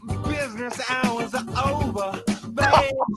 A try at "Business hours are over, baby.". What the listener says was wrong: And I love one more time on the pronunciation of over. There's no R here.